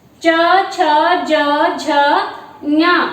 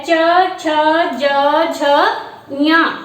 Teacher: इन ध्वनियों का जब उच्चारण करते हैं तो हम इसमें क्या है, हमारी जो जिह्वा है वो तालु को स्पर्श करती है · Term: तालव्य ध्वनियां